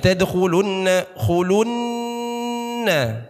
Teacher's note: Ya ini huruf ra syiddah, qaf syiddah, nun tasydid yang harus didengungkan bacanya